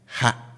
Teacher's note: we have ha with a high tone